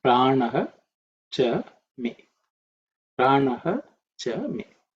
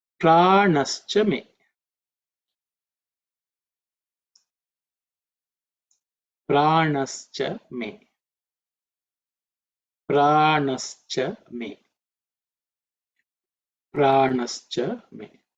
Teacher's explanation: So visarga again has become ish because of sandhi, and that's how we get pranascha me. If you split the sandhi, it will be pranaha cha me.